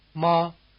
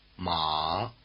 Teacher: the distinctive difference between the two tones you just heard is that one is high and one is low